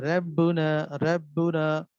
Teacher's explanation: मसलन रब्बुना में रा बारीक पड़ी